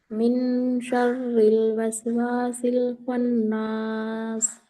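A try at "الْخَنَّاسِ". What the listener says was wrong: देखो आपने खन्ना जल्दी पढ़ दिया ना आपने, खन्ना गुन्ना नहीं किया आपने। ये है ना ब्लू कलर जो है ना, मैं इसमें जबान की नोक लगाई है नहीं, खन्नास में तो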